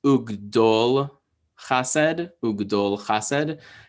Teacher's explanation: So it's closed by the lamed, it's closed by that consonant. And so the kamatz, that ah vowel, gets shortened into an O sound because short vowels like closed syllables and long vowels like open syllables.